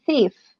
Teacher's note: in the word thief, you have one sound that is the tongue between, the upper and the lower teeth. But then at the end, you have the F, and the F is actually lower lip and upper teeth.